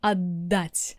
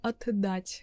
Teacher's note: т becomes д and you kind of pronounce double д